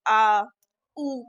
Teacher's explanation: पश्च स्वर आप बोलेंगे आ तो आपको अंदर से आवाज आएगी